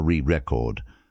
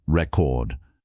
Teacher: record as a noun is stressed on the first syllable, re record. But record as a verb is stressed on the second syllable